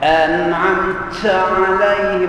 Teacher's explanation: jangan dibuat-buat bunyi bunyi angin pada huruf ta